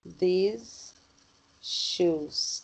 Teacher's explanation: É porque você emenda o som do S final com o som do S.